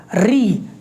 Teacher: जब आप री बोलते हैं तो आपकी जीभ की जो नोक है वो आपके मूर्धा वाले हिस्से से टकराती है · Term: मूर्धन्य वर्ण